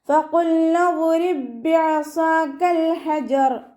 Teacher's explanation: ഫഖുൽനാ ദ്രിബ് ബിഅസാകൽ ഹജർ ഇവിടെ ഒരേ മഖ്റജിൽ നിന്നും വരുന്ന 2 അക്ഷരങ്ങൾ തമ്മിലുള്ള ഇദ്ഗാമാണ്. സുക്കൂനായ ബ അടുത്ത ബയിലേക്ക് ലയിപ്പിച്ച് ഓതി കൊടുക്കുക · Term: ഇദ്ഗാം മുത്തമാസിലാൻ